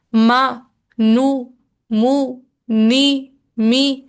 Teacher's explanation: जैसे मैं बोल रही हूँ ना, मा, नू, मू, नी, मी। तो जब मैं नून अदा कर रही हूँ और मीम अदा कर रही हूँ, तो तब भी नैनो सेकेंड्स के लिए ही सही, लेकिन नाक में आवाज जरूर जा रही है। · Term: गुन्ना